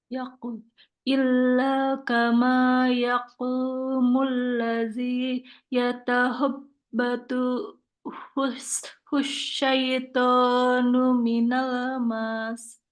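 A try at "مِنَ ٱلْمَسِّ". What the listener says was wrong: Enggak panjang. Minal mas.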